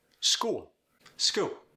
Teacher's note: The dark L, this is subtle. It almost becomes a W, but not quite.